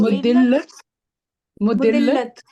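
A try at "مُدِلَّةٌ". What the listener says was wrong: अच्छा जी, वो उसको वो जो बोलता है ना उसके ऊपर भी तनवीन पड़े, फिर सही बन जाएगा। मुदिल्लतुन।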